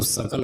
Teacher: दंत सकार बोलेंगे तो सकल होगा